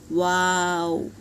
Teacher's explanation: दोनों होठ गोल करके अदा करेंगे